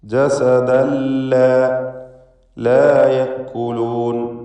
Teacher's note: ഇദ്ഗാം ബിഗൈരി ഗുന്ന നൽകി തൻവീനിനെ ലാമിലേക്ക് പൂർണ്ണമായും ലയിപ്പിച്ച് മണിക്കാതെ ഉച്ചരിക്കണം